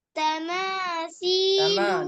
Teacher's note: ناک میں آواز جائے گی, میم میں